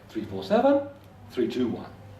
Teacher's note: when we're finished we use a down a falling intonation but when we're not finished we use a down up intonation